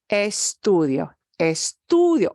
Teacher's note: the I-O hangs together. That's a diphthong